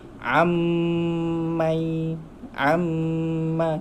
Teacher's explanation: bila nun mati bertemu mim, nampak tak ada sabdu dekat mim tu, kita terus masuk ke sabdu huruf mim. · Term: hukum idgham